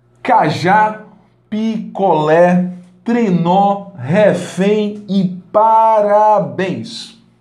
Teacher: a sílaba tônica dessas palavras é a última esse a última sílaba mais forte ela deverá ser acentuadas se terminarem ar é o é m